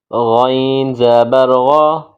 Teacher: غین کو حلق سے ادا کریں گے۔ حلق کا وہ حصہ جو منہ کے قریب ہے، یہاں سے غین ادا کریں گے۔